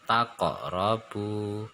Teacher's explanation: Nah, takok robu, kolkolah sugro, ada kof sukun mati, sedikit memantul pembacaannya kembali ke huruf awal